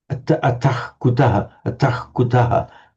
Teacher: the visarga before a k comes out almost like a ch